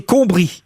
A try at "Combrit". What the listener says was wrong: Combrite. On prononce le T.